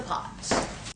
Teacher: and you can see a dark space in the mouth because the tongue is pressed down in the back just the way the a vowel should be